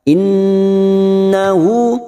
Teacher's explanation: Nun yang bertasdid gunna musaddadah kita dengungkan dan ditahan selama tiga harakat